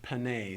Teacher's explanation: Panay, the A sound, so actually a long E, sounds like A to us in English, but panay, long E, you hear the remnant of a Y sound at the end of that vowel. It's thus marked with a yod.